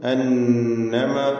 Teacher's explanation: ശബ്ദ നൽകപ്പെട്ട നൂന് മണിച്ചുകൊണ്ട് ഉച്ചരിക്കണം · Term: നൂൻ മുശദ്ദ